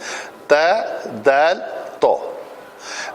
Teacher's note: تا پتلا ہے، دال پتلا ہے، اور تو جو ہے وہ موٹا ہے، اس کی آواز میں ذرا بھاری پن ہے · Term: حروف نتعیہ